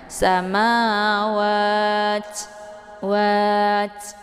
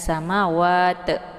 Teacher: kalau misalkan ta itu sukun, maka dia sifatnya hamas. Jadi hamas itu ada sedikit desis angin yang agak samar-samar. Jadi saat melafadzkan samawat, wat, jadi ada anginnya, jangan sama wat.